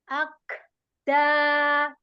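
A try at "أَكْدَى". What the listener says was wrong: Lagi, sedikit aja renggangnya. Akda. Akda. Ya, sedikit aja renggangnya. Akda. Itu terlalu terlalu dilepas, makhrajnya terlalu banyak. Sedikit aja renggangin sedikit. Akda. Ya, sedikit.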